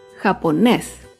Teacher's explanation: Japonés es una palabra aguda. Se acentúa en la última sílaba y lleva tilde porque termina en la consonante S.